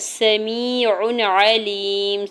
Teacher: آگے عین حرف حلقی میں سے ہے تو یہاں پہ عین کی دو پیش کی تنوین پر اظہار حلقی ہوگا ، ٹھیک ہے، یہاں غنہ یا اخفا نہیں کریں گے، عین